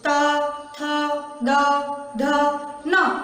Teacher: तो ये आपकी जीभान दांतों से टकरा कर फिर इन वर्णों का बाहर निकलना होता है, इसलिए इनको दंत्य यानी दंताः वर्ण कहते हैं।